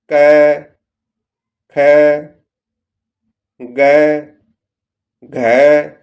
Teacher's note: इनका उच्चारण गले या कंठ से होता है।